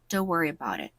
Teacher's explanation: And about it often blends into something close to about it, with the final t of about connecting smoothly to it. · The t in don't softens or almost disappears before a consonant sound. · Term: linking between words